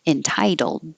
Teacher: the second T changes to a d and then you hold that final D